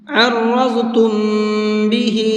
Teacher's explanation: را کو بھی اور ضاد کو بھی، ان دونوں حرفوں کو پر کر کے پڑھیں گے، منہ بھر کے پڑھیں گے · اس میم کے اندر غنہ کریں گے، اس لیے کہ یہاں پر میم ساکن کے بعد میں با ہے